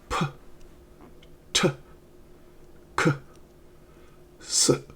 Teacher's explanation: When we pronounce the voiceless consonants in American English, the vocal cords do not vibrate.